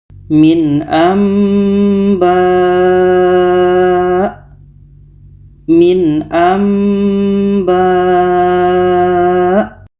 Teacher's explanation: ayat 44 ini di sini nun mati bertemu ba Ini iqlab bunyi Nun kita ubah kepada mim dan kita iringi dengan dengung